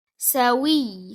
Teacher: The wa will be joined with ya mushaddad sawiya. Now you'll raise your voice on ya. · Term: nabr